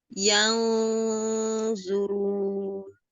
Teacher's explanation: Tidak NG, bunyinya tidak NG ya di pertengahan antara N dan NG. Nah, jadi dia samar.